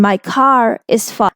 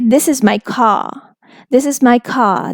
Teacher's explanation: if after car we have the word is that is beginning with a vowel sound so you will say the r sound